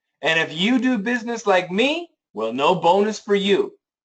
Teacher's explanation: So you guys remember, when you're reading sentences, one thing that will help you understand intonation is if there is comparison. If there's any comparison, we want to emphasize the words being compared. And here it's the you, me, you.